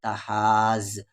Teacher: کھینچتے ہوئے زیادہ ملائیں گے تحاز، مد کے سمبل کے بعد تشدید ہے یعنی اس مد کو ہم لوگ کھینچیں گے 5 سے 6 الف کے برابر